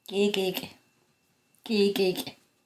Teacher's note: you're listening for that popping noise that goes along with this sound.